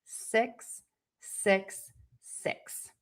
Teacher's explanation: the word six is going to have a more closed mouth and the tip of your tongue is going to be high and behind your top teeth, but it is not touching.